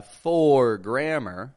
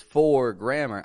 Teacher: I'm keeping the sound flat quick I'm not stretching that o out